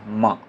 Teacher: दोनों ओंठ क्या होता है? एक दूसरे को टच करता है